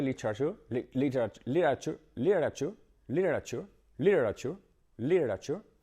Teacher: las tes cuando se meten entre dos vocales se convierten un poquito en R. Así que ahí tenemos casi una R.